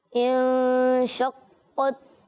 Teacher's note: دال آیا اور اس میں تشدید ہے. حروف قلقلہ جب مشدد ہو تو جماؤ کے ساتھ ان کی ادائیگی ہوگی.